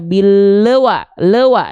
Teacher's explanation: Nah, le kan e-nya itu bunyi vokal tuh. Nah, memantul itu terdengar ada bunyi vokal e di sana, berarti dia memantul.